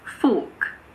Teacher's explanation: In standard British English, as well as in Australian English, the R is silent if it is followed by a consonant or if it's at the end of a word.